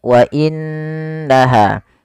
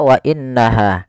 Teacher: dengan sepanjang dua harakat wa inaha tidak langsung dibaca WA innaha tapi ditahan dulu suara gunahnya sepanjang dua harakat · di sini ada Nun berharakat tasydid Apabila ada nun berharakat tasydid kita hukumi dengan bacaan ghunah yaitu suara nunnya kita tahan dengan sepanjang dua harakat wa inaha tidak langsung dibaca WA innaha tapi ditahan dulu suara